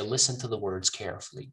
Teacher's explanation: when I decrease the pronunciation of to and the, I am actually increasing the pronunciation of listen, words, and carefully. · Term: Stress